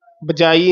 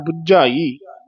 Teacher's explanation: ਕਸ ਕੇ ਬੋਲਣਾ ਬਜਾਈ ਨਹੀਂ ਬੋਲਣਾ ਬਬਾ ਜਜੇ ਦੇ ਨਾਲ ਬੁਝਾਈ ਜਜਾ ਨਹੀਂ ਬੋਲਣਾ ਝੱਜੇ ਦੇ ਨਾਲ ਤੇ ਕਸ ਕੇ ਉਚਾਰਨ ਕਰਨਾ